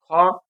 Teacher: ঠিক আছে অনুরূপে অ ঘ অর্থাৎ এই বর্গগুলো সবগুলোই শ্বাস বায়ু উচ্চারণ করার সময় শ্বাস বায়ু বেশি লাগে তাই এটাকে আমরা বলব মহাপ্রাণ